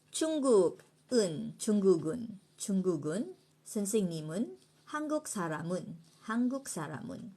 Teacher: So liaison is when a final consonant is followed by a particle ending or a word that begins with a vowel, the consonant sound moves to the beginning of the following syllable when pronounced.